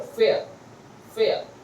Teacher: the ra sound is not pronounced in the standard form of English